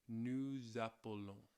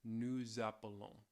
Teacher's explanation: You get this little liaison between that S and the vowel, the A at the beginning of it.